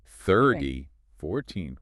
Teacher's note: But with 30 or 14, the stress is right at the front.